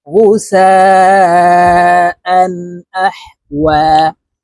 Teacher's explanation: তানউইনের পরে ইজহারের হরফ হামজা আসছে এই কারণে এই হামজাকে গুন্না ছাড়া স্পষ্ট করিয়া পড়ব